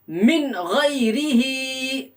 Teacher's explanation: نون ساکن کے بعد حروف حلقی کے 6 حروف میں سے غین آ رہا ہے، اس لیے نون ساکن کی آواز کو ظاہر کر کے پڑھیں گے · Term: اظہار